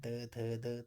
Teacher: दंतिया यानी कि दांतों से अब उच्चारण कर रहे हैं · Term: दंत्य व्यंजन